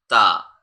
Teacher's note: we have to place the tip of our tongue at the roof of our mouth just before the rabbit teeth